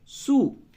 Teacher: یہ جو چھوٹی سین جو بغیر نقطے کی سین ہوتی ہے، اس کی ادائیگی میں ایک طرح سے سیٹی کی آواز نکلتی ہے، سیٹی کی آواز۔